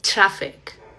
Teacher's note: Cuando la T y la R van juntas en una palabra, vas a pronunciarlo como si fuera un sonido de che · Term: che sound